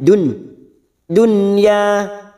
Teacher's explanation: huruf nun sukun yang bertemu ya namanya Idhar wajib atau Idhar mutlak masuk tanpa mendengung